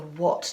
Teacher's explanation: the a is not saying ah it's saying o